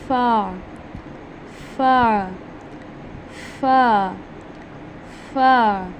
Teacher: ऊपर वाले दांतों को निचले होंठ के तर हिस्से से टच करेंगे। ठीक है, ड्राई पार्ट से नहीं टच करना आपने होंठों के, इसको टच करना है आपने तर हिस्से से, जब आपने फ़ा को अदा करना है अच्छे से।